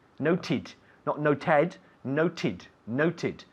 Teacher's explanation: this is a regular verb, to note, but it ends in a T sound, so we have to add the extra syllable. So it's note, every day I note, yesterday I noted, noted, not noted, noted, noted.